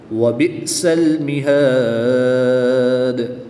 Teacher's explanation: قُلْ لِلَّذِينَ كَفَرُوا سَتُغْلَبُونَ وَتُحْشَرُونَ إِلَى جَهَنَّمَ وَبِئْسَ الْمِهَادُ، وقف کی حالت میں یہاں پر مد عارض ہوگی، دال کی پیش کو ساکن کر دیں گے، دال حروف قلقلہ میں سے ہے تو یہاں پر قلقلہ خوب ظاہر کریں گے۔ حمزہ ساکن کو جھٹکا دے کر پڑھیں گے۔